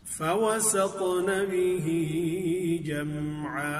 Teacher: فَوَسَطْنَ تا پر قلقلہ بھی کریں گے، اس کو تفخیم کے ساتھ پڑھیں گے۔